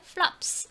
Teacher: flop 같은 경우에는 끝에 소리가 여기가 울리지 않는 성대가 울리지 않는 무성음이죠. 무성음일 때는 s 발음이 난다고 말씀드렸습니다.